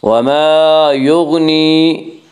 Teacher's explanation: وَمَا يُغْنِي، یا مدہ، یا مدہ وہ یا جو ساکن اس سے پہلے زیر ہو، یا مدہ کو ایک الف کے برابر کھینچ کر پڑھیں گے